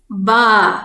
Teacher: The long vowel alif. Then we read it ba, a little bit stretched sound. So a letter with ba, the letter ba with the fatha, ba.